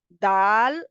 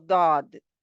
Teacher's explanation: दाल जो है वो शिद्दत वाला है और इसमें आवाज़ जो है वो बंद हो जाती है दाल में